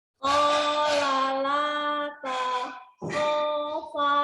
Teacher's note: Qala la pendek pertama, yang kedua berpanjang.